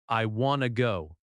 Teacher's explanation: The stress is on want or go, not on every word.